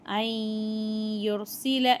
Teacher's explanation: சுக்கூன் பெற்ற நூனுக்கு பின்னாடி யா இருக்குது. இங்கே இதோகாமுடைய சட்டம் வரதுனால நம்ம குன்னா செஞ்சு ஓதணும்.